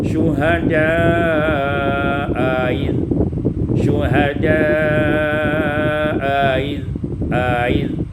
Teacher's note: Qalahu pada ayat 133 syuhada'a id, tashil hamzah, tashilul hamzah tsaniyah waslan, ditashilkan hamzah yang kedua secara wasal